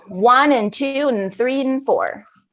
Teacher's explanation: when we reduce the word and, we actually make it mm